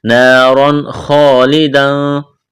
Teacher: تنوین کے بعد خا ہے، حروف حلقی ہے، اظہار کریں گے، غنہ نہیں کریں گے